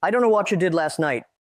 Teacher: Second, what you undergo palatalization. The T and Y sounds merge to create a ch sound becoming watcha. · The T and Y sounds merge to create a ch sound becoming watcha. Third, the t at the end of the word last is elided or dropped because it is followed by the consonant n in night.